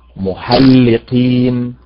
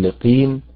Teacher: أين النبر؟ على حركة القاف. نلحظ أن آخر الكلمة عبارة عن حركتين كساكنين، اللام والقاف متحركتان والياء والنون ساكنان، حرفان ساكنان.